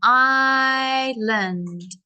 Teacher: So the S is silent. Island. So we stretch out that I, island.